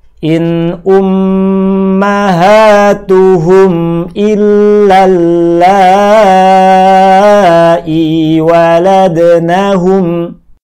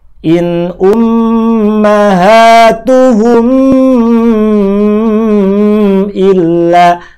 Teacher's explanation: Mim mati idhar yang ada tanda sukunya dibaca pendek. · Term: mim mati izhar